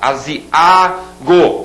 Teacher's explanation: Aziago, esse A sozinho é a sílaba tônica